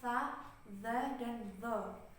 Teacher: Itu kan tempat keluarnya sama, yaitu dari ujung lidah bertemu dengan dengan gigi seri atas kan